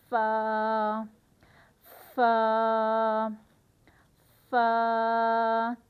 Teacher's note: فا کا جو قاعدہ ہے پڑھنے کا وہ یہ ہے کہ اوپر کے 2 دانت جب نیچے والے ہونٹ کے اندرونی حصے سے ملیں گے تو حرف فا ادا ہوگا